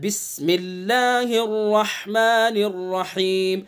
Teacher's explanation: रहमान के हा को भी सही निकालना है और रहीम के हा को भी सही हलक के बीच से निकालना है